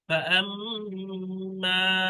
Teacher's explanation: এই মিমের উপর তাসদিদ আছে, মিম মুশাদ্দাদ, মিম মুশাদ্দাদকে গুণনা করতে হবে